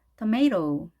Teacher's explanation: tomato. 그런데 또 t가 양쪽에 모음이 있을 경우에는 r 발음을 하죠. 그래서 tomato 이렇게 발음을 하겠습니다. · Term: 아메리칸 스타일